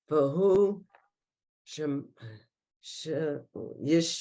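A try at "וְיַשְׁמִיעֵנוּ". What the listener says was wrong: No, there's a yud first. Yashmi Enu. You see it? Yashmi Enu. See it?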